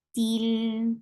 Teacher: Til for kasra, give E sound. Attached with lam, lam will get sifa of tawassut. Til. This l sound is tawassut, and linamar are the letters.